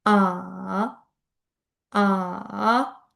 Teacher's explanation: baland ovozdan pastga tushib yana yuqoriga ko'tarilishingiz kerak bo'ladi